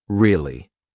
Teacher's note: to show that you're not so interested in the conversation with downward intonation